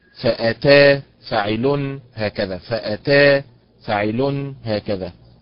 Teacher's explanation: فأتا فاعل هكذا، فأتا فاعل هكذا، النبر فيها على حركة التاء